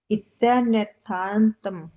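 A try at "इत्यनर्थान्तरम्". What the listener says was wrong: इत्यनथारंतरम हाँ इत्यनथारंतरम वापस र लेना नथारंतरम आप नथार्थ बोल के थोड़ा रुके फिर रम ले।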